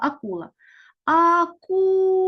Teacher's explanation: наголос падає на другий склад